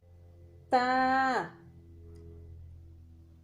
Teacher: تا کو زبان کی نوک اور ثنایا علیہ کی جڑ سے ادا کرنا پڑتا ہے